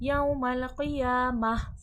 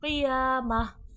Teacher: यौमल क़ियामह, यहाँ पर गोलता है, गोलता वक़्फ़ में हा पे बदल जाती है, यानी कि हा की आवाज़ में तब्दील हो जाती है। जब भी गोलता पे वक़्फ़ होगा आवाज़ हा में तब्दील हो जाएगी।